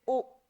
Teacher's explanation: जैसे ओ बोलते हैं तो ऐसा हो जाता है ना हमारा जो मुंह है मुख द्वार जो है गोलनुमा आकृति ले लेता है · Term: अर्धसावृत्त